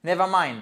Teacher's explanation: si vous dites never mind, vous voyez, je redescends, mais là, on sent que c'est un peu agressif